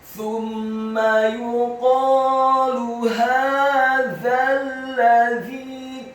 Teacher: Thumma yuqalu hadzal ladzi, kata hadzal ladzi, huruf ha-nya dibaca tafkhim, tebal, fathah 2 harokat karena harokatnya tegak. Kemudian huruf za-nya dibaca tipis, tarqiq, lidahnya agak keluar sedikit, fathah. Cukup satu harokat saja karena setelahnya langsung disambung ke huruf lam yang tasydid dan fathah satu harokat.